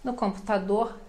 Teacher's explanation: R final de palavra também bem suave, pronunciado, mas bem suave